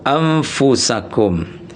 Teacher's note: jadi bunyi nun sukunnya sudah mengarah ke huruf fa amfu bukan ampufu anfusakum.